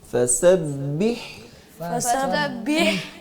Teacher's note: اس کو فسبح بہ با کو مجہول نہیں پڑھیں گے، بے یہ نہیں بی